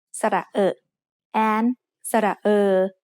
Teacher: They make the vowel sound which is a little bit like the ER in her, only said with a more relaxed throat.